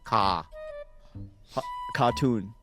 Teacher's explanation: there's no R when you say it